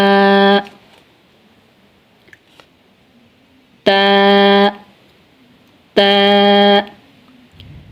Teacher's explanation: ता का मखरज है नोके जुबान और सनाया औलिया की जड़े सामने वाले जो ऊपर वाले दांत हैं इनको सनाया औलिया कहते हैं।